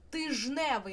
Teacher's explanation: Але коли ми починаємо починаємо це слово міняти, тижневий, нам уже незручно було б казати тиждневий, і д випадає і виходить слово тижневий. Отже, ждни перетворюється на жн. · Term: спрощення